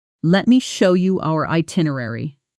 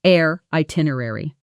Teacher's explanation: In fast speech, our itinerary often blends into air itinerary. The two vowel sounds almost merging into one continuous glide.